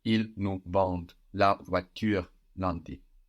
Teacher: So we have ENT, and that ENT, which is silent on the end of verbs, just helps us hear that D before